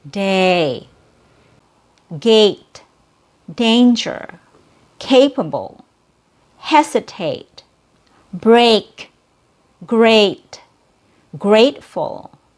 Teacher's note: Here we have the letter A as a long A sound. The long A sound involves 2 steps. So first you drop the jaw and then you bring it back up. This is how you make the sound longer.